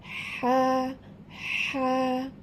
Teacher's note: এই কণ্ঠনালীর মধ্যভাগ হইতে হা উচ্চারিত হবে, একটু হালকা চেপে উচ্চারণ করতে হবে।